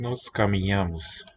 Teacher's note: So this palatal N written nya seems to be a bit weakened as well, lenited, with incomplete closure of the oral passage.